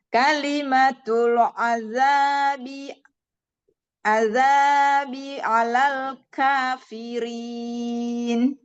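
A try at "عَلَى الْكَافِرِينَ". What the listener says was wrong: Alal ka. Tawasud juga lamnya tidak alal ka. Nah, kalau misalnya itu pasti neken kafir ka gitu kan. Tapi ka alal kafirin. Ringan aja ya. Walakin kalimatul azabi 'alal kafirin.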